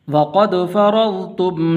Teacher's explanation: را کے اوپر زبر ہے تو اس لیے اس کو آپ نے پر کر کے پڑھنا ہے